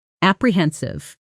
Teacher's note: Stress on the third syllable. Hen.